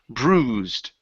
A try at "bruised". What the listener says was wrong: give me a B instead of prue.